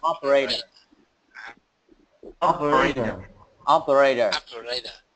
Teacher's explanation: Ok, âm T thành âm D.